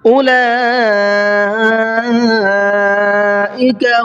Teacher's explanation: اولئک لام کے اوپر یہ بڑا مد ہے، اس کو مد متصل کہتے ہیں، اس کو 4 سے 5 الف کی برابر کھینچ کر کے پڑھتے ہیں۔